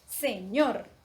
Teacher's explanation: la sílaba que tiene el acento o la mayor fuerza de voz es ñor